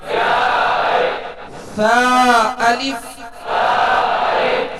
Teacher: ثا کو نرمی کے ساتھ ادا کریں گے، اس میں سیٹی کی آواز پیدا نہ ہو، کیونکہ ثا اور سین میں فرق کرنا ہے.